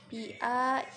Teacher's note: ini mad badal, cara membacanya itu panjangkan 2 harokat